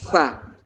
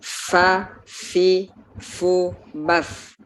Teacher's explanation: makhrajnya huruf fa adalah gigi seri yang atas dengan bagian dalam bibir bawah. Bagian dalamnya, tidak perlu di luar ya, bukan fa, tapi bagian dalamnya fa, seperti itu.